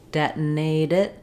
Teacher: So if I'm saying detonate it, then I'm going to say my T as a flap. It'll sound more like a D.